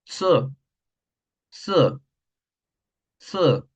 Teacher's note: Suena fuerte, suena corto, muy corto, y no tiene un rastro de aire. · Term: la Z